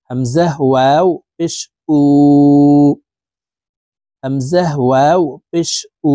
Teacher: আর এখানে দেখুন, এই যে পেশের বাম পাশে জজমালা ওয়াও থাকার কারণে এই পেশওয়ালা হামজাটি জজমালা ওয়ার সাথে এক আলিফ টেনে ঠোঁট গোল করে পড়তে হবে